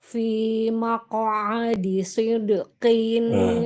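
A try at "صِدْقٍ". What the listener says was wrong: Itu huruf shod. Bacanya soy. Jangan sidqin. Yang benar soy. Soy gitu.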